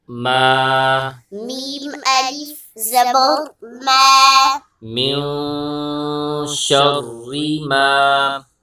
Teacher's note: آگے دیکھیں میم کے بعد الف ہے، اور یہاں پر الف سے پہلے زبر ہے، تو الف مدہ ہوگا، ایک الف کی مقدار کھینچ کے پڑھیں گے